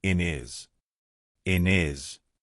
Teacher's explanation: We've taken away that H completely, and we've made it into one word,